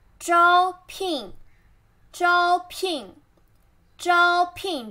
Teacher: 招 flat tone, 聘 forced tone